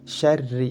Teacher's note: Jadi ra apabila berharokat kasrah maka harus dibaca tipis.